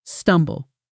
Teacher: The B is barely pronounced, almost silent